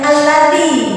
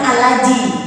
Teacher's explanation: Lidah kita menyentuh ujung gigi. Jangan alaji, tapi alladzi.